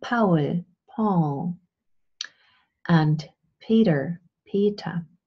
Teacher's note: the sound in question is this bilabial plosive this voiceless bilabial plosive